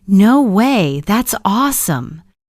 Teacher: Notice how the tone rises with surprise. It's playful, curious, full of emotion.